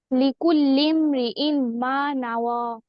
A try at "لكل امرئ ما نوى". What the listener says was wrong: হ্যাঁ এইটা সুন্দর হয়েছে মাশাআল্লাহ